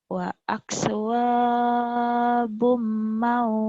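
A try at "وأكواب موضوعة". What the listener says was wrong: Jangan kepanjangan, Mak Tobi cuma satu alif ya. Wa akwabum maudu'ah. Wa akwabum maudu'ah.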